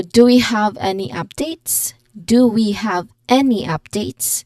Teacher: So the final S in updates it should be clearly audible if there is more than one update.